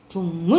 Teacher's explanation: 기억이 뭐로 변하는 거야 이응으로 변하는 거죠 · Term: 비음화